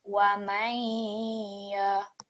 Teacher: So not completely clear noon, but partial noon is heard when merging with the ya mushaddad · when we merge these two letters together, we will slightly hear a light ghunna or a light nasal sound. So that means we will read it as wa man. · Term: partial assimilation